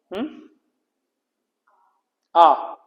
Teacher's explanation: विब्रत स्वर जिसमें पूरा मुंह खुल जाता है, आ आता है केवल